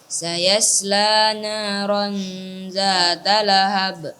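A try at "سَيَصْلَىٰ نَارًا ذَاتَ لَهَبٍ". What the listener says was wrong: Ya, shadnya ditebalkan lagi. Sayaslana. Shad ketika dia sukun, maka anginnya juga dijelaskan. Sayaslana.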